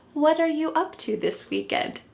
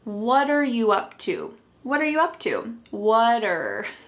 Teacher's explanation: the word what and are creating a spoken contraction